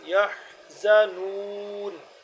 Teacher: حا کا مخرج حلق کے درمیان والا حصہ، درمیانی حصہ ہے